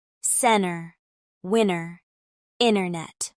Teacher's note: Another detail to practice is how Americans pronounce NT in the middle of words. In casual speech, NT can become a nasalized N sound with the T disappearing